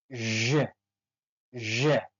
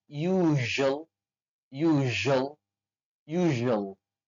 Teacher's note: Kemudian sh, bunyi sh beri getaran pada tenggorokan atau ada getaran pada gigi kita sehingga menghasilkan bunyi j.